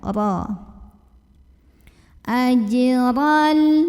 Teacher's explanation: Berikutnya huruf ro dibunyikan secara tafkhim karena ro-nya berbaris fathah. Maka bacanya ditebalkan, pangkal lidah dinaikkan.